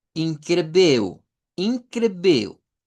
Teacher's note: hay un par de palabras que hay que ponerle atención porque terminan en L. Entonces, si usamos el acento de Brasil, debemos de cambiarla por una U.